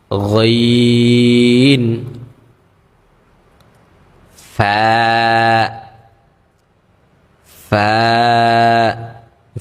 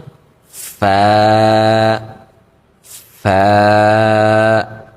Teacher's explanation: উপরের যে আমাদের দাঁতগুলো রয়েছে সেগুলোকে আমরা আমাদের নিচের যে ঠোঁট রয়েছে সেই ঠোঁটের পেটে লাগিয়ে দিব। অর্থাৎ ঠোটের যে ভিজা অংশটা রয়েছে সেই ভিজা অংশে আমরা লাগে উচ্চারণটা করব।